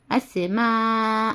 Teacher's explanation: اس میم الف مد زبر ما حمزہ زبر آ اسماء اور حرف مدہ کے بعد حمزہ ایک ہی کلمے میں ہے یعنی ایک ہی ورڈ میں ہے تو ہم اس کو 5 حرکت کے برابر یعنی 3 الف یا 3-4 الف کے برابر کھینچ کر پڑھنا ہے